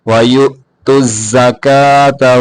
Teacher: یہاں جو یا کے بعد ہے وہ حمزہ ہے، یوت الزکاة لمبا نہیں کریں گے بلکہ جھٹکے کے ساتھ پڑھیں گے